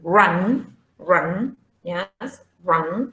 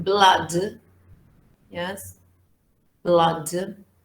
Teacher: So the sound is mid as regards horizontal tongue position and open as regards vertical tongue position.